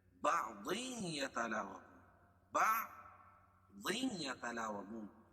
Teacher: تنوین کے بعد ادغام مع الغنہ کے 4 حرفوں میں سے یا ہے اس لیے یہاں غنہ کر کے پڑھیں گے